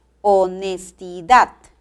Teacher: la mayor fuerza de voz recae en la última sílaba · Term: acento